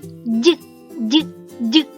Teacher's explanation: коли ми вимовляємо звук дь кінчик нашого язика опущений а повітрю заважає виходити з ротика передня частина спинки язика яка стукає о альвеоли · звук дь теж приголосний Бо повітрющо виходить з ротика заважає передня частина спинки язика яка стукає об ті самі горбочки звук дь теж дзвінки бо горлечко тремтить голо працює він м'який